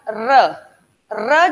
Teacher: र जब क्रिएट करते हैं साउंड र, तो जबान ऊपर जाती है और इस साउंड को क्रिएट करने के लिए जबान को पीछे थोड़ा सा बेलन की तरह मुड़ना पड़ता है। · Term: लुंठित